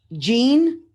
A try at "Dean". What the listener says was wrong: Not Jean, deep, as in deep water.